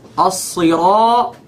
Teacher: Make the ra heavy and then make the ta heavy.